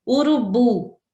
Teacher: o bu é a tônica e as outras são átonas